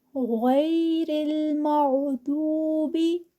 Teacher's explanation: गन मोटा है फिर दद भी मोटा है और इनको मोटा ही अदा करेंगे